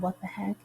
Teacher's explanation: So unstressed, unstressed, stressed. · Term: anapest